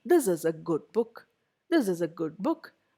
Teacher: you'll notice that my pitch goes down there is a fall in the pitch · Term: falling intonation